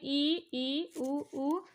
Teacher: हमारा मुंह बिल्कुल ही नहीं खुलता है, जैसे सिला हुआ हो। तो इसे हम विपरीत संवृत स्वर कहते हैं।